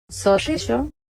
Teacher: one of them more retroflex, curling the tongue, more like ʂ and the other more palatal, more like ɕ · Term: two kinds of ‘sh’ sound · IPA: soʂiɕo